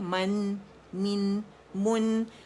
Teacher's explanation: ٹھیک ہے، آواز نیچے جائے گی، لوجا نیچے جائے گا، ڈراپ ہوگا. اور دمہ کے لیے گول کر کے آواز نون ساکن سے ملی ہے، لیکن نون ساکن پہ لپس گول نہیں ہوں گے